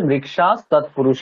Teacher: হকার উচ্চারণ করবো না যেহেতু বিসর্গের পরে দন্তস আছে